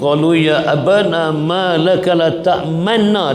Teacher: sifat Nun bertasydik kena dengung dengan Qadar dua harakat